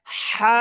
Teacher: দুই নাম্বার মাখরাজ যেটা, গলার মাঝখান থেকে গলা চেপে